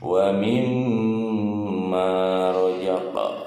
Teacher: Hukum bacanya qalqalah sugro ya, karena di tengah-tengah kalimat, pantulannya sedikit saja.